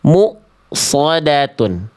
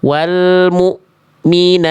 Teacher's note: Bunyi hamzah itu ketika sukun harus putus. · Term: hamzah sukun